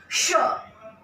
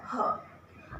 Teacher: इन चारों व्यंजनों को बोलते हुए हमारी आवाज में फ्रिक्शन होता है।